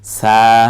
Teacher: হিম, সলাতিহিম, সকে আকার দিয়ে সিনের একক স আকার দিলে সা, জবরের পরে খালি আলিফ এক আলিফ টেনে বলবো